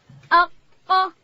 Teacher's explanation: قاف ادا کیږي د ژبې پای به لوړ تالو ته ورولو